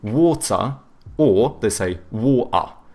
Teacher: the British, they tend to have either hard T's or they do like the glottal T, so but then they do a schwa instead of pronouncing the R, so they say water or they say water.